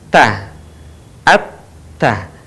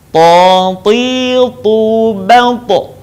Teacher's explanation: Perbedaannya dengan huruf ta adalah huruf to tidak mengalir nafas dan huruf to diucapkan dengan suara menebal.